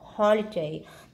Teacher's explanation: Ví dụ như holiday, chúng ta sẽ đọc mạnh hơn cái âm o, holiday. Cho nên ở đây gọi là nhấn âm đầu đó.